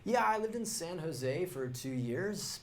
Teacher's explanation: uptalk, and that's when a speaker ends a statement with a rising tone.